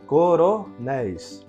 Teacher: O nés é a sílaba tônica e termina em ei. Portanto, aqui está no plural, recebe acento gráfico.